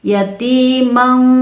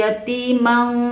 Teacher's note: Makanya dibacanya jadi samar, tidak boleh dengung dan tidak boleh idhar. Yatimang, dari mang ini masuk ke hidung, bukan yatiman ya, tapi yatimang. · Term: ikhfa